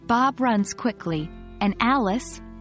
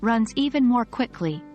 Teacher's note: for comparisons we generally use a rising intonation on the item being compared and a falling intonation at the end of the comparison